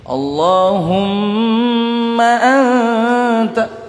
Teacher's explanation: ditekan di situ karena ikhfa, nun sukun bertemu dengan ta